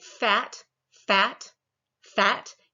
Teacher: your vocal chords do not start vibrating until you get to the vowel sound